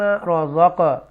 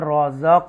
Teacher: امیم رازق، یہاں حروف قلقلہ ہوگا، رازق ایکو ساؤنڈ کے ساتھ، جنبش کے ساتھ پڑھیں گے ہم، حرکت کے ساتھ